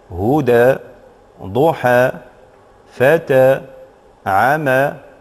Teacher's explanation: الوقف عليها يكون بالألف، وهذا الألف يقرأ بالإمالة الصغرى عند الوقف